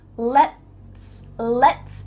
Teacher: When you say the T in the middle of the word let's, your tongue is just tapping the top of your mouth.